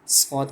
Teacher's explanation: जबान की नोक जब ऊपर और नीचे के अगले दोनों दांतों के दरमियान आ जाए तो स्वाद अदा होता है